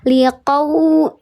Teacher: Bukan huruf u, tapi di sini jadinya huruf w. Ya, liqau dikeraskan bibirnya.